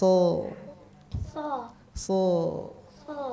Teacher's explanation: jadi pangkalnya diangkat supaya dia menjadi tebal karena ada sifat untuk isti'ala dan itbaqnya ya